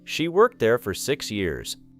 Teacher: The final T in worked may be soft or difficult to hear.